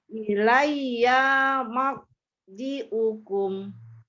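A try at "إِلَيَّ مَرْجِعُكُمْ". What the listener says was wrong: Iyanya pendek. Coba lagi.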